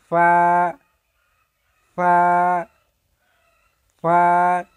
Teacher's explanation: উপরের দাঁত নিচের ঠোঁটের সঙ্গে মিলিত হয়ে উচ্চারিত হয়